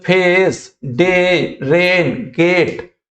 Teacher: तो ए आई का साउंड बीच में कहीं पे आ रहा है